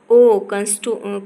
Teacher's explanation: कंठोष्ठ्य, दीर्घ पश्च अर्ध विवृत वृत्तमुखी